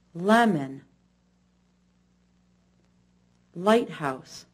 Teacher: the L sound is made by opening the mouth a bit the teeth are slightly apart with only the bottom front teeth shown the tip of the tongue touches the top front teeth